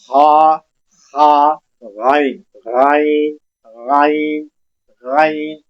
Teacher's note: जहां हलक खत्म होता है और दरमियान में एक काक लटका हुआ है हमारा, उस काक और उस काक और हलक के दरमियान में से ये गाइन और खा अदा होता है। बिल्कुल आपने क्या करना है, हलक को नीचे से ऑफ करना है और साउंड को बाहर निकालनी है। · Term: खा और गाइन